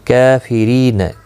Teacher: کافرین کاف کے اوپر کھڑی زبر ہے، ایک الف کی مقدار کے برابر کھینچ کر پڑھیں گے